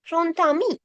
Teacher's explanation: මේ D is pronounced as T. එහෙනම් මෙතන grontami the එකක් ඇහෙන්නේ. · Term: liaison